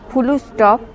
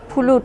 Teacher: যুক্ত ব্যঞ্জনকে ভেঙে তার মাঝে স্বরের আগম ঘটানো। প্রকৃতপক্ষে যুক্ত ব্যঞ্জন উচ্চারণে বাকযন্ত্রের ওপর বাড়তি চাপ পড়ে, সেজন্য বাংলা ভাষার সম্ভাব্য ক্ষেত্রে যুক্ত ব্যঞ্জনকে ভেঙে তার মাঝে স্বরধ্বনি এনে উচ্চারণে সহজ ও সরল করার ঝোঁক দেখা যায়। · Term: মধ্য স্বরাগম